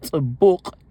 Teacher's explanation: a sound that has no equivalent in English, but is similar to an S that has a more forceful sound, almost as if you are merging a T and an S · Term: ts